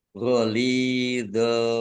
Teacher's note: fathah tanwin bertemu dengan huruf ghoin bacaan idhar dibaca jelas